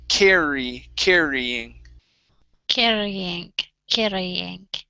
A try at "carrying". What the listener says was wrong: oh first time was good second time you hit the top of your mouth one more time